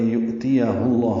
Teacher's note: ہا کو اقصی حلق سے ادا کرتے ہوئے لام اسم جلالہ سے ملائیں گے اور پر پڑھیں گے